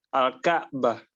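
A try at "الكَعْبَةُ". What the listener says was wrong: Dibaca lengkap harokatnya.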